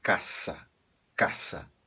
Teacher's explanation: você vai ler com um S forte caça nunca casa tá esse som sonoro não existe em espanhol